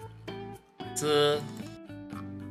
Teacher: Ujung lidah menuju gigi atas bagian dalam, lalu lafalkan konsonan Z.